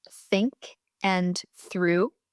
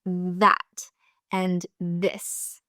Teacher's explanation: Both are pronounced with the tongue between the teeth. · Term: TH sounds